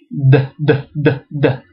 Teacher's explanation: The real reason is because des starts with your tongue up against your teeth.